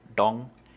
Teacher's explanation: sometimes pronounced with the tongue curled back like dong